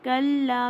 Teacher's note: کَلَّا میں دیکھیں لام الف ہے، خالی الف سے پہلے زبر ہے تو یہ 2 کاؤنٹ ہو جائے گا